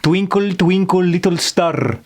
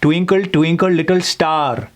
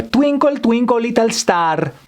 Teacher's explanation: They tend to put a lot of emphasis on the L's, for example, and they tend to swallow those vowels. Twinkle, twinkle, little star, an example of a Russian accent.